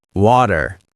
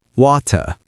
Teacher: Americans often pronounce t as a soft d like in water.